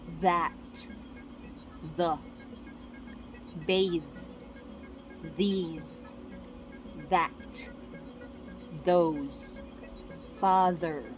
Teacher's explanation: First is voice TH. You can feel the vibration from your vocal cords as you say them, since we use voice. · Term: voiced TH